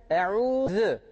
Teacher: Buradaki z harfi peltektir. Yani bu z'yi okurken e'uz dilimizi hafif ön dişlerimizin arasından çıkartıyoruz.